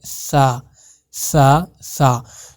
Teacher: یہ سا نہیں ہے، یہ ہے سا سا سا. جو آپ کی زبان ہے نا وہ آپ کے دانتوں کے بیچ میں آئے گی، تو آپ کا یہ سا ادا ہو جائے گا